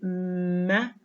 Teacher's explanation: When we say meh, the airstream stops behind the lips. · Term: nasal stops